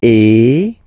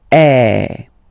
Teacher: normally your mouth should be opened a little bit more than with the accent aigu